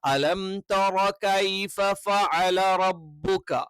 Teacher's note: ഐൻ തൊണ്ടയുടെ മധ്യഭാഗത്ത് നിന്നാണ് വരേണ്ടത്. അത് ഫഅല അല്ലെങ്കിൽ ഫഅല എന്നൊന്നും ആയി പോകാൻ പാടില്ല.